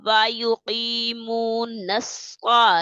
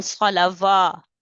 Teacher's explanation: واو کو چھوڑ دیں گے، واو نہیں پڑھیں گے